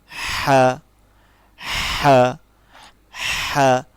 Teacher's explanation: ছোট হার উচ্চারণ হচ্ছে সবসময় গলার মধ্যখান থেকে আসে।